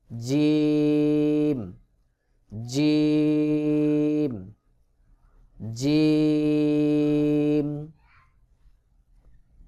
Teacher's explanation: জিহ্বার মধ্যখান তার বরাবর উপরের তালুর সঙ্গে লাগাইয়া একটু চাপ দিয়ে উচ্চারণ করতে হবে